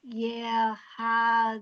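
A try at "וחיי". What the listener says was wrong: No. It's a vav.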